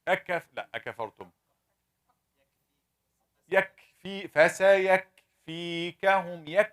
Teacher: I closed, I made the shiddah first, and then I released some air to give you the hams.